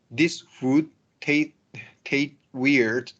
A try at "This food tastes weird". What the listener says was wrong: So I want to make the S, so tastes weird. we want to do both of them. Yeah, tastes weird.